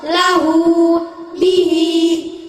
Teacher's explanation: Mad silah qasirah setiap hu dan hi yang dibaca panjangnya 1 alif atau 2 harokat